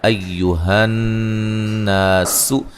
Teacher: نون مشدد پہ غنہ ضروری ہے، الف مدہ ہے